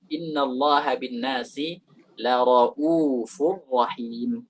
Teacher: Rauf pakai mat 2 harakat